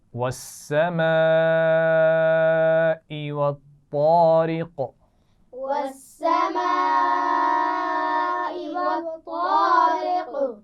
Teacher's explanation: بڑی مد ہے، خوب کھینچ کر پڑھیں گے